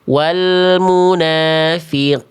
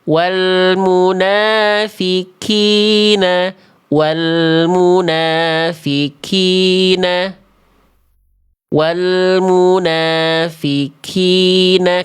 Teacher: Kenapa bisa jadi kaf? Karena kafnya keluar percikan-percikan nafas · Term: huruf kaf